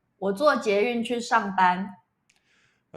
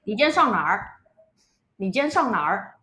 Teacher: Taiwanese Mandarin tends to be pretty evenly spaced syllables, whereas Beijing Mandarin tends to vary in syllable length a lot more.